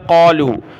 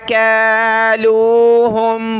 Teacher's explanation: اس کاف کو بڑا قاف پڑھتے ہیں